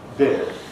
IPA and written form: bɪr (beer)